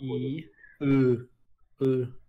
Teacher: именно вот переход от «и» к «ы» – это язык просто назад уходит.